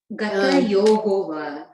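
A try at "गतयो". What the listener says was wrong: Gata Yoda, there's no visarga there at the end. Gata Yoga. Gata Yoga. Yaha, sometimes they might have. If they have Gata Yaha, they might sometimes have. Change it to Gata Yo in that case, but there's no visarga there.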